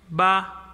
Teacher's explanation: So we use this particle ba with neutral tone, no tone.